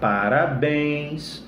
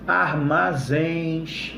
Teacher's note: essas palavrinhas são acentuadas porque são oxítonas, a última sílaba é a mais forte, e é uma oxítona terminada em, beleza?